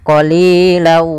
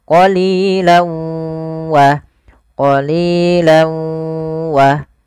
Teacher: Awalnya qolilan karena ketemu wau masuk ke huruf wau tanwinnya menjadi qolila. Jadi ganti W karena dia huruf wau itu W identiknya.